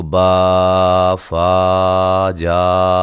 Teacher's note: اتنا یہ زیادہ لمبا ہو رہا ہے، یہ 2 سے 3 الف کے برابر اس کو لمبا کیا جا رہا ہے، جو کہ غلط ہے